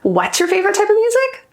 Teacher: that upward intonation is telling you that I'm either shocked I'm in disbelief I want you to clarify